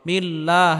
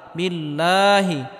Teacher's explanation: আল্লাহ শব্দের পূর্বে যদি জের হয় তাহলে আল্লাহ শব্দকে চিকুন করে পড়তে হবে